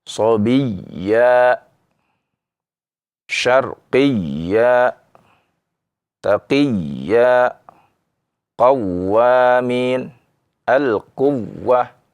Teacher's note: Nah, kita naikkan suaranya, tekanannya, ya, karena di sana, ya, ada tasydid, ya, disertai mad, ya, dan ini yang disebut juga dengan naber. Kemudian pada huruf wawu dan ya bertasydid karena jika tidak ditekankan akan menjadi mad